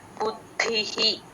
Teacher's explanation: బుద్ధిహి మనసస్తు పరాబుద్ధిహి బు బు కి ద ని జాయిన్ చేసి చెప్పాలండి ద కింద ద ఒత్తు మహాప్రాణం రెండు ఉన్నాయి బుద్ధిహి ఆ విసర్గ హి అవుతుంది పెన్సిల్ తో నోట్ చేసేసుకోండి మనసస్తుపరా బుద్ధిహి